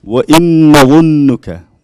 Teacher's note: Noon mushadda, so you have to do 2 haraka long.